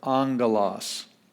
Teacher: The first gamma, but only the first one, has an N sound. And so when we have the word here, angelos, the first gamma has an N sound, and then we get the G sound, angelos.